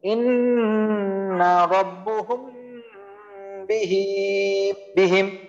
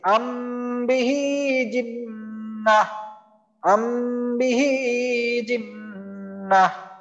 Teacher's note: আচ্ছা আরেকটা উদাহরণ দেই, ইন্না রাব্বুহুম বিহিম, এখানেও দেখেন মিম সাকিনের পর বা আসছে, মিম সাকিনের পর বা আসার কারণে আমি মিমকে গুন্না করছি